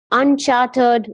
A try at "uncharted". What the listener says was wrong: So that means there's no charter, but this is uncharted. Uncharted. There's no R in it. You see, there's no R. Uncharted.